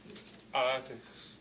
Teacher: Okay, but I'm telling you that it actually has a glottal stop at the beginning.